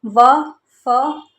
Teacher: ऐसी ध्वनि जिसके उच्चारण में ऊपर के जो दांत है वह नीचे के होठ को स्पर्श करते हैं। दंत्योष्ठ ध्वनि कहलाती है।